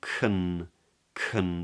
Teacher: back of the tongue comes up and drops into a schwa